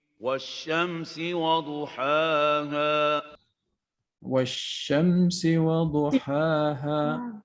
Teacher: So the lam of Ash-Shams was removed. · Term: sun letter